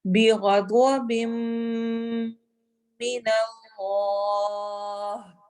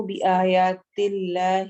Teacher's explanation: اللہ کے لام کو ہم موٹا کر کے پڑھیں گے کیونکہ اس سے پہلے فتحہ ہے. اس سے پہلے والے حرف جو لفظ ہے اس کا آخری حرف ہم نے دیکھنا ہوتا ہے اللہ سے پہلے والے.